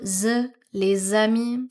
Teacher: So common liaison with S or X, you will hear that as a Z sound,